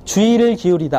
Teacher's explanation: 첫 음절이 아니라 둘째 음절부터는 이로 발음되더라. 주의를 기울이세요 할 때 의로 표현되지만 이로 발음됩니다.